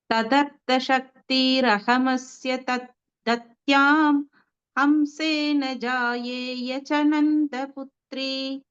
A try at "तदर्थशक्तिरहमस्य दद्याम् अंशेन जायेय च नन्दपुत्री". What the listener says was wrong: Very good.